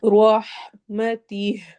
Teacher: یہ شا پہ مد کریں گے، او فی یا مدہ ہو رہا ہے، یا ساکن اور اس کو 2 حرکہ لمبا کرنا ہے، رحمتی، روح رو کو موٹا کرنا ہے